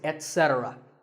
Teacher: And also remember that the stress is on se. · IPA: /et-’se-trə/